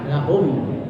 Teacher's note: Izhar itu artinya jelas, terang. Jadi, mimnya dibaca terang lahum ya dengan mulut tertutup ya. Yaitu bertemunya dua bibir antara bibir atas dan bibir bawah. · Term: izhar syafawi